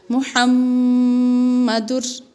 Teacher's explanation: دال کو را کے ساتھ جب ملائیں گے تو آواز تنوین کی ناک کے اندر نہیں جائے گی ۔ جس طریقے سے ایک پیش کو پڑھتے ہیں، دال، را، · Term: ادغام بلا گنہ